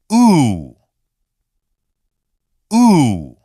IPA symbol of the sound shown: u